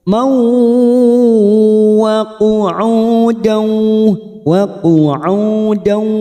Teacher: fathah tanwin pada huruf mim bertemu wawu idgham bi gunnah. Kita tekan selama 3 harokat siap masuk ke huruf wawu.